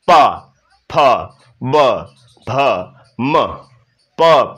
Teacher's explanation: प वर्ग को बोलते समय दोनों होंठ आपस में टच होने अनिवार्य हैं